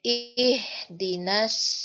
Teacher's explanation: kurang naik pangkal lidahnya Bu naikin lagi Bu biar tebalnya ke kedengaran